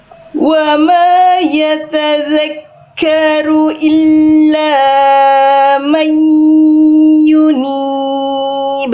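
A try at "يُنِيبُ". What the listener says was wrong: Panjang aja, panjang banget laknya. Panjang aja, karena nggak ada alis ya.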